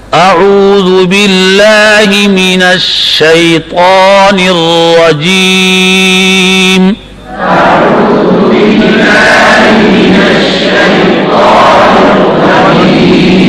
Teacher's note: را پر جب زبر آتی تو آپ پر پڑھتے, موٹا پڑھتے